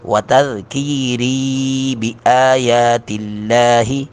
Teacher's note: لام کو بھی باریک پڑھیں گے ، لفظ جلالت کے لام سے پہلے زیر آ گئی ہے،